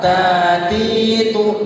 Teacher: ta itu ada sifat hamasnya. Hamas itu desisan, ada desisan. Jadi seakan-akan ada suara yang itu keluar.